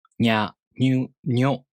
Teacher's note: these are pronounced with the [ɲ] sound, not the [n] sound, plus [a], [ɯ], [o]. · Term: Yōon